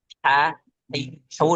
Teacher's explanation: Ha itu yang kita baca ha hu dari tenggorokan tengah itu kan dia benar-benar jelas ya